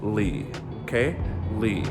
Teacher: keep your voice super low for third tone